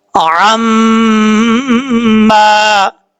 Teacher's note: عَمَّا، عین میم زبر عم، میم الف زبر ما، عَمَّا، میم کے اوپر شد ہے، غنہ کریں گے ایک الف کی مقدار.